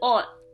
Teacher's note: since it has an S at the bottom, it will sound like a T